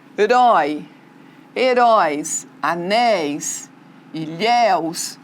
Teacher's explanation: Ele é um ditongo aberto e está na última sílaba.